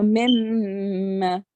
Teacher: hold the sound of meme in for 2 seconds